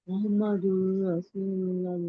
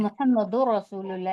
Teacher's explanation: ना गुन्ना होगा ना इख्फा होगा, सीधे सीधे हम इसको जी मुहम्मदुर रसूलुल्लाह इस तरह पढ़ेंगे। · बिला गुन्ना के मिलाकर पढ़ेंगे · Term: इदगाम ताम